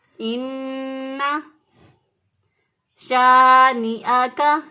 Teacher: ان نون مشدد اور میم مشدد پر ہمیشہ گننا ہوتا ہے. ایک الف کے برابر نون کی آواز کو ناک میں ٹھہراتے ہوئے ادا کریں گے.